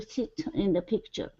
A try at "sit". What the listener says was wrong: Let's go to the word sit instead of see, seat. Okay, let's use the short I here. Sit.